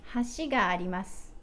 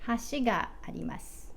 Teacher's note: So both of these are hashi, but with a particle, let's use ga. How would you say bridge? 橋があります。 Do you hear that? It goes low, high, low.